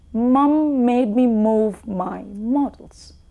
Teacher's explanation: you can try saying this and you feel the air rushing out through the nose